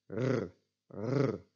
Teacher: the back R, which is made by trilling your uvula, the thing dangling in the back of the throat